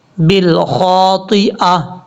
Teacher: خا حروف مستعلیٰ میں سے ہے، پر پڑھا جائے گا